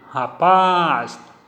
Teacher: a tonicidade na última sílaba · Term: oxítona